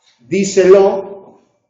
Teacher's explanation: Un verbo, el imperativo, di, un pronombre, sé, y otro pronombre, lo. Díselo es esdrújula y lleva acento en di, mientras que di no lleva acento.